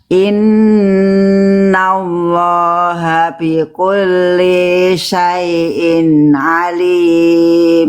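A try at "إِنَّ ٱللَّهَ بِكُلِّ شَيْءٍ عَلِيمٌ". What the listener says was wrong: Bagus banget, kurang satu linya jangan kepanjangan ya Bunda. Linya satu harokat. Diulang lagi.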